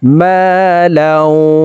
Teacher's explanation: তো এখানে দেখুন, তানউইনের পরে ইদগামে বা গুন্নার হরফ ওয়াও আসছে, এই কারণে এই তানউইনওয়ালা লামটি তাসদিদওয়ালা ওয়ার সাথে গুন্নার সহিত মিলাইয়া পড়তে হবে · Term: ইদগামে বা গুন্নাহ